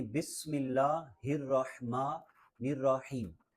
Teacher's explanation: سین میں ہلکی سی سیٹی کی آواز آنی چاہیے